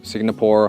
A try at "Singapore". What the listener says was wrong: It's not Singapore, it's Singapore. The NG makes a sound in your nose. Sing, like when you sing a song. Together, Singapore. Not Singapore, but Singapore.